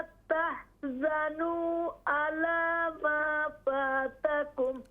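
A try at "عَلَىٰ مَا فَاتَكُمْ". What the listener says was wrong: आला, अला नहीं है, आइन। अला मा फातकुम,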